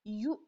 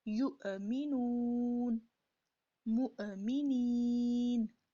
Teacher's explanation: جب واو کے اوپر حمزہ ہے تو واو کو جھٹکے کے ساتھ پڑھا جائے گا